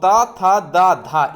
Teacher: और ता था दा धा, इसका उच्चारण स्थान होता है दंत